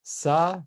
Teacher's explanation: the back of your tongue is right where the ah sound should be while you're doing the s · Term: pharyngeal s